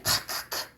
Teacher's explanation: 키읔은 여린 입천장 소리면서 안 울림 소리면서 파열음이면서 거센 소리